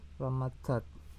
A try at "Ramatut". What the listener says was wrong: Enggak, Ramatut. Nama Ramatat atau Ramatut itu bahasa apa? Mesir itu apakah U dibaca A? Enggak dong. U A O E sama. Jadi dibilangnya Ramatut.